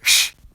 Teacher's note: There's also the harsh voiceless alveolopalatal fricative [ɕː]